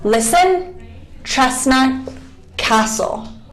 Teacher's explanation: And there are also some words that are silent. So in the words listen, chestnut, and castle, the T is completely silent